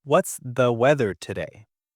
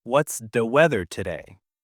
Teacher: We don't always say it with a long clear th sound. We might say duh.